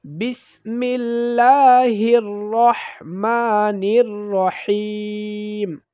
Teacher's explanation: আর এই হা কণ্ঠ চাপা হা, অর্থাৎ কণ্ঠনালীর মধ্যখান থেকে উচ্চারিত হয়, হলকের মধ্যখান থেকে উচ্চারিত হয়। এই হাটা একটু চাপা মতো হবে।